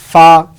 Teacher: ফা উচ্চারণ করতে যেমন উপরের 2 দাঁত নিচের ঠোঁটের মাঝখানে লাগছে